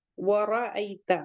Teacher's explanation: را کو ہیوی پڑھیں گے پورا ماؤتھ بھر کے